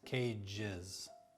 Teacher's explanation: Cage ends in a j sound, so it's followed by is, cages. For example, when the singular noun ends in s, classes. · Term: is sound